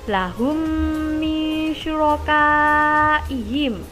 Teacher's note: ada huruf mim sukun bertemu mim sehingga dibaca dengung